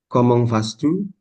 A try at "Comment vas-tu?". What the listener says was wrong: Bukan pas, S-nya nggak kebaca. Nah itu, S nya nggak kebaca, Monsieur. Kayak bu itu kan juga S-nya nggak kebaca. Ya, vas-tu? U, comment vas-tu? Comment, itu huruf S.